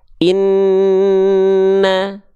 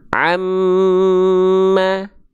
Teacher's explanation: kalau hurufnya adalah huruf nun dan huruf mim ketika bertasdid teman-teman sekalian baru dia dibaca harus ditahan karena dia ada hukum namanya gunah dia ditahan berapa harakat dia